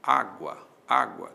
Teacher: Há uma subidinha do U para o A. Esse U é semivogal, o A é vogal. Aí nós temos um ditongo. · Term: Ditongo crescente